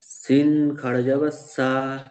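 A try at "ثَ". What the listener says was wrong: সিন নয়, ওটা সা খাড়া যাবার সা।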